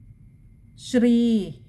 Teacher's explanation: ശ്രീ, അവിടെ ഇകാരം നീട്ടിയെടുക്കണം, വിസർഗമുണ്ട്, പകുതി ഹകാരത്തിൽ വായിക്കുക